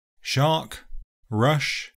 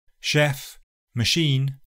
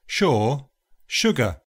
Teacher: is made by squeezing air past the tongue and the roof of the mouth just behind the alveolar ridge. The voice is not used, so the sound is a voiceless, post-alveolar fricative. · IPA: /ʃ/